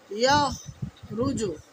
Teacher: ইয়াখ বলার সময় যেন আমাদের গলা থেকে খড়খড়া আওয়াজটা না হয়, উচ্চারণটা ভুল হবে তাহলে।